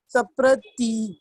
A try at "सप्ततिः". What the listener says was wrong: सप्ततिः. नहीं, प्र नहीं है वो, प एंड त मिक्स है, तो सप्ततिः.